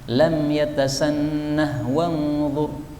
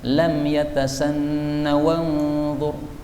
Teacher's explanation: ketika disambung bacaannya boleh haknya tetap dibaca lam yatasannah wanzur, boleh juga haknya dihilangkan lam yatasanna wanzur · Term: hak sakat